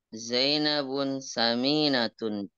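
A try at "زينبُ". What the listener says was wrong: Zainabnya jangan ditanwin ya. Zainabu.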